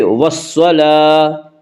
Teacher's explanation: گول تا کے اوپر جب وقف کریں گے، گول تا وقف کی صورت میں ہائے ساکنہ بن جاتی ہے